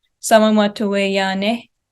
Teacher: it looks very flat. And then we see a little rise at the end. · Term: dependent phrase